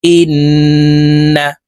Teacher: নুন ইন ওয়াজিব গুন্না হরকতের বামে নুনের উপরে তাসদিদ আছে তো এই হামজা তাশদি নুনের সাথে নাকের বাঁশি থেকে গুন্না করে পড়বো